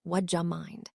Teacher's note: In natural, connected speech, would you compresses, the D and Y sounds come together and form a sound similar to J, so would you mind is spoken more like would ya mind.